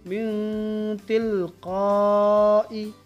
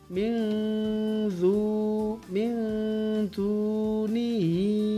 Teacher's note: berdengung dengan mendekati bunyi n, lalu suara ditahan 2 ketukan. Ya, artinya yang dia lebih dekat kepada nun sukunnya. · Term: ikhfa kubro